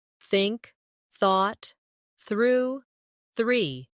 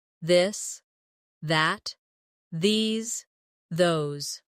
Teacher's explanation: put your tongue lightly between your teeth and push the air out for the soft th in think, for the harder th in this. Add a bit of voice to the sound.